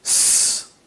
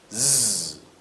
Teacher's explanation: Those 2 sounds are made in the same manner and in the same place, and here we have an instance where, again, one is voiced and the other is not. First, the unvoiced, s, and the voiced, z.